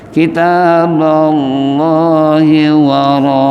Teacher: mad wajib karena mad asli disambut oleh hamzah dalam satu suku kata yang nggak bisa dipisah